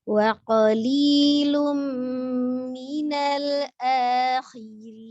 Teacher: Ketika ro kasroh maka dia tipis, jadi jangan khirin, hirin bukan, tapi khirin, tipis saja ya, sempurnakan huruf nunnya.